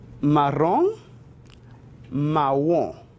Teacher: La pronunciación es realmente similar al español, pero requiere suavizar un poco la R, ¿bien? Y la nasalización al final se reduce.